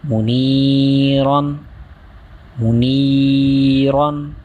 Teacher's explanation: حرف مدہ ایک الف یعنی دو حرکات کے برابر کھینچ کر پڑھیں گے